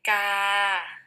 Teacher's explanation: it remains flat and then drops off at the end. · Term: midtone